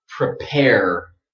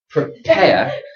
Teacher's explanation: British speakers don't pronounce a strong R at the end.